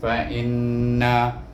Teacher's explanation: Kemudian hamzah baris di bawah in ditasydid dengan nun bunyi in, tetapi oleh kerana nun bertasydid kita bunyi in itu dengan gunnah, dengan dengung 2 harakah. Fa in, nun baris di atas na, fa inna.